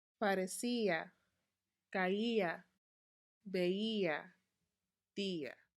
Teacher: They are pronounced with a strong stress on that I sound.